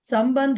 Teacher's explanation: Okay, ఉపసర్గలు పదాల కింద treat చేయబడతాయి కాబట్టి సమ్ అనే దాంట్లో అనుస్వారం ఉండేసరికి ఇప్పుడు దీన్ని ఇలా బా అనేది పవర్గాక్షరం కాబట్టి అనుస్వారం కాస్త మకారం కింద మారి పవర్గ అనునాసిక కింద మారి సంబంధ ఇలా రాయొచ్చు.